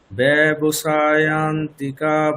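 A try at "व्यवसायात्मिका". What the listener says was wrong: আচ্ছা, ব্যবসায়াত্মিকা তো ম দুটোই উচ্চারণ হবে, মানে সমষ্টি ব্যবসায়াত্মিকা মানে যুক্তাক্ষরে বাংলার মতো হয় না, মানে দুটো অক্ষরে উচ্চারণ করতে হয়।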